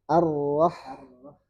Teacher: Jadi dikontrol getarannya jangan sampai sepanjang bunyi di awal saja.